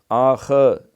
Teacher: خا کے اوپر کلکنا نہیں ہوتا، اس میں خراٹا ہے